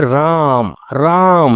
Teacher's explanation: र पे अधिक जोर पड़ रहा है और म पे कम जोर पड़ रहा है।